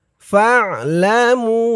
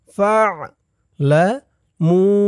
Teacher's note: আইনের উচ্চারণটা গলার ভিতর থেকে শক্ত হয়ে বের হবে।